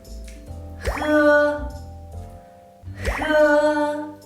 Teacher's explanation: The first thing you need to do when you pronounce it is that holding the back part of your tongue and towards the raised soft palate. And then it forms a narrow channel of the air, and you need to let the air out.